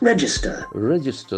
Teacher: The accent falls on the first syllable.